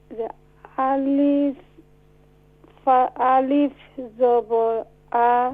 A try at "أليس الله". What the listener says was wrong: No alif. When alif on the haraka, you can't recite. You don't recite is alif. Recite hamza. Hamza zabar a.